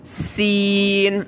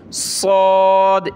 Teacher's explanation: دیکھیں صاد کو موٹا کیا جاتا ہے، سین میں سیٹی کی آواز آتی ہے اور صاد میں بھی، لیکن سین کو پتلا کر کے پڑھتے ہیں یعنی سین، اور صاد کو موٹا کرتے ہیں